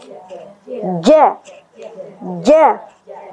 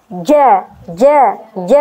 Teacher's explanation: Kemudian huruf jim ini adalah huruf yang tipis. Nah, maka dibaca ja, ja, ja. Bagian tengah bukan depan. Ya, sekali lagi kita ulang, bukan bagian depan.